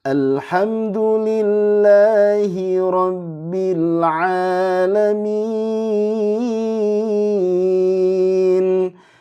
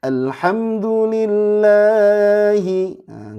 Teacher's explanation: ada Mad Thobi'i panjangnya dua harakat enggak boleh Berlebihan